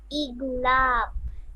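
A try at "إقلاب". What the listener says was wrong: ইগনা ক আছে, ইকলাব। গ না, ক, ক খ গ, এই ক। ইকলাব।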